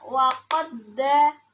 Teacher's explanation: dal yang pertama dan dal yang kedua saling bertemu, yaitu sama makhraj dan sifatnya. Jadi dibacanya waqadda, ada tasdidnya di da yang kedua gitu. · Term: idgham mutamasilain